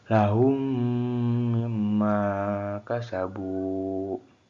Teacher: meleburkan bunyi mim pertama ke mim berikutnya disertai dengan dengung dua harakat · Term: idgam mimi, idgham mimi